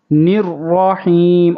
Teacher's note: نون کو را کے ساتھ ملائیں گے، را کے اوپر تشدید ہے، جماؤ کے ساتھ پڑھیں گے۔ نررحیم، اور را کو پر کریں گے۔